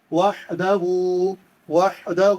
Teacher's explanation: وحدہ میں یہ جو ہا ہے اس کو حلق سے پڑھتے ہیں